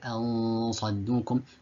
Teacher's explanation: so the tongue moves towards the مخرج of the صاد. It doesn't quite hit the مخرج of the صاد, but it gets close to it. طيب, and then you accompany, you hold the tongue there and then you accompany that that letter or that tongue where you've held it, you accompany it with a غنة for two vowel counts. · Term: إخفاء